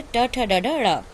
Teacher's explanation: टा वर्ग में इसका उच्चारण स्थान है मूर्धा